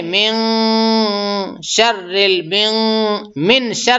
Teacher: اس پہ جو ہے اخفا ہوتا ہے، یعنی آواز کو ناک میں تھوڑا چھپایا جاتا ہے. نون کو ایک دم صاف نہیں بلکہ تھوڑا چھپا کے بولتے ہیں، اور اخفا غنہ دونوں ہوگا.